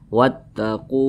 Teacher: dah dan posisinya tepat berada di belakang huruf wa yang sukun Mad thi'i panjangnya dua harakat atau kira-kira dua ketukan